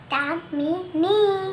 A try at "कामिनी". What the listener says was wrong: दामिनी नहीं, कामिनी। कहो क। नहीं, क का कहो कामिनी बोलो। तामिनी नहीं, कामिनी। इधर देखो, कहो कामिनी। कामिनी इधर देखो, कामिनी। फिर कहो कामिनी, शरारत नहीं करो, कहो कामिनी। कहो कामिनी